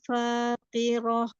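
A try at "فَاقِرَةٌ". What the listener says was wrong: Enggak roh. Masih ha kecil. Roh. Dari bawah. Roh. Jangan roh.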